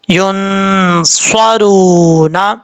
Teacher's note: صاد حروف مستعلیٰ میں سے ہے، پر پڑھا جائے گا. را کے اوپر پیش را پر پڑا جائے گا یعنی موٹا پڑا جائے گا، واو مدہ ایک الف کی مقدار لمبا کریں گے